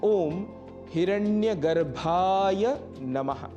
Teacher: पर यहां भ महाप्राण है। अतः प्राणवायु अधिक लगेगी